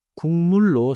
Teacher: One pronunciation note. 국물 is written 국물. But in natural speech, it sounds like 군물. So, 국물로 sounds like 군물로.